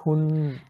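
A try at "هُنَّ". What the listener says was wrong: উচ্চারণটা হচ্ছে না, আপনি একটু নোট রাখেন। এই হা এবং হা আপনার যেটা হচ্ছে দুটোই কণ্ঠের মাঝখান থেকে হচ্ছে। এটাকে স্বাভাবিক বানিয়ে ফেলবেন। একটা স্বাভাবিক আর একটা কণ্ঠের মাঝখান থেকে। হাতি উচ্চারণ করেন তো, হাতি। হ্যাঁ, হাতি। তাহলে হুন্না।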